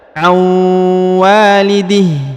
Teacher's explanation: nun sukun bertemu dengan wau maka ditekan ditahan dua harakat dengan dengung